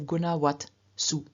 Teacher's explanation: And the locative plural has the ending su, which does begin with a consonant, but it's an unvoiced consonant, so the T remains as it is. It remains unvoiced, so we have gunawat su.